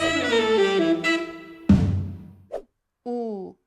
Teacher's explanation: this is a close back rounded vowel put your tongue up close to your palette sink it low in your mouth at the back and tighten your lips